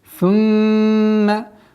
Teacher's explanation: Удержание в назализации в размере 2 огласовок.